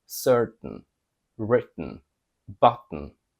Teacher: they specifically pronounce it with the stop T and then a N sound after it